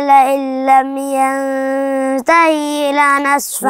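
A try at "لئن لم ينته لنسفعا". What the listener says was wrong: ما فيش ياء هنا، في هاء مكسورة. أيوة ينتهي لنا، ينتهي لنا، لنا نسفعا، لنسفعا بالناصية،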